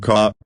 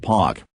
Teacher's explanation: the R sound is not pronounced when it comes after a vowel. For example, the word car sounds more like ka, and park sounds like pak. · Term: non-rhotic